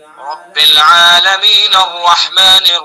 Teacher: जैसे रब्बिल आलमीन अर्रहमानिर रहीम, ठीक है, रब्बिल आलमीन, अगर हमने वफ कर दिया फिर तो अर्रहमानिर रहीम पढ़ा जाएगा, लेकिन अगर वफ नहीं करेंगे, वस्ल करेंगे, तो फिर जो आलमीन का नून है इस नून को रा के अंदर मिला देंगे